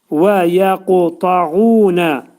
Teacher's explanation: Ta hərfinin məxrəci, demək ki, dil damağa tərəf qalxır və qalın ta hərfini deyirik.